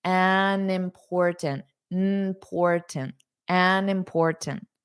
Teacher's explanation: notice an, but then hold out that N